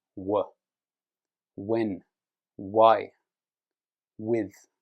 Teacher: So when you say W, the back of the throat pushes forward so that it can come through the circle shape of the mouth and make a W sound